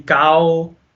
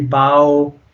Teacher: Okay, now it's not in this case, but if, for example, you did have a vowel and you had jazm on top of that, you would have a o sound. Okay, so if you'll go from ah to o, and if you put it together, it makes ow. Okay, in this case, if we had a kaf, then it would be cow. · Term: huruf al-leen